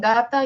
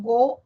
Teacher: En gata yo no redondeo labios, en go redondea mi labio